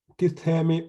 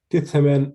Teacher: the change from a long E sound to a short E sound in the stem when moving from the singular to the plural